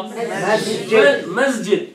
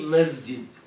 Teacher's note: لأنه السين مهموسة والجيم مجهورة. الجيم حتى ترتاح باللفظ تحتاج إلى حرف مجهور بجوارها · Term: تجاور حروف مختلفة الصفات